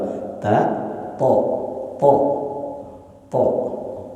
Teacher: kalau makhrajnya huruf th itu ada pada ujung lidah sama kayak kita mengucapkan huruf ta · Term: huruf tho